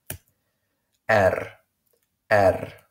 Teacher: The sound R is different from English. In Afrikaans, we use a rolling R.